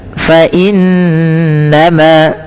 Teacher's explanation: inna ditahan suara bunyi n-nya sepanjang 2 harakat karena ia bacaan gunnah.